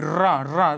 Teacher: कंपन से उच्चारित होने वाला वर्ड या लुंठित, लुढ़क कर जिस वर्ड की ध्वनि बाहर निकलती है उसे प्रकंपित या लुंठित वर्ड कहते हैं।